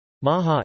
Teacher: Between vowels a breathy or murmured /ɦ/ can occur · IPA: [ˈmɑɦɑ]